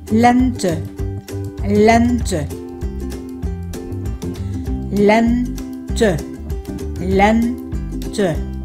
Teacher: Đây là từ có hai âm tiết và được nhấn âm tiết đầu tiên len